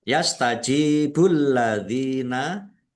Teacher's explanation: jim kasrh ya sukun juga mad thobi'i dibaca panjang dua harakat. Alladzina lamnya ada tasdidnya dibaca dobel.